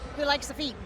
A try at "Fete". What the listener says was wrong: Fate, yep. Everybody says feet. I'm like, it's fate, but it's all right. Fate. Yep, like an A.